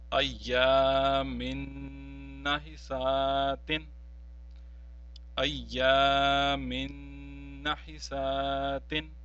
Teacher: we will not pronounce the noon tanween, but we will pronounce the noon which is mushaddad after it. This will be as ayyamin nahisatin, ayyamin nahisatin. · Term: noon mushaddad